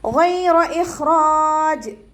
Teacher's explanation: ഗൈനിൻ്റെ മഖ്റജ് വരുന്നത് അദ്നൽ ഹൽക്കാണ്, തൊണ്ടയുടെ ആദ്യ ഭാഗം